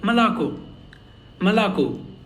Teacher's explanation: There are 3 O's here, but the only last O is stressed. So it sounds like Malako.